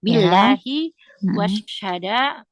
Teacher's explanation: karena sebelumnya berharakat kasrah jadi tipis